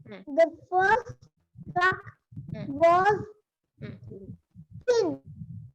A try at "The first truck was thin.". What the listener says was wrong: Thin. Good.